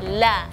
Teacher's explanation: makhraj huruf lam keluar dari pinggir lidah dari bagian depan ya, jadi usahakan agak lebar makhrajnya, jangan la, jangan ditekan di bagian depan saja, jadi la enggak, jadi la.